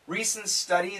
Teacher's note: the N and the s cancel the T